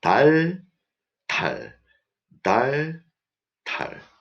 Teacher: But for t, strong air comes out from your mouth.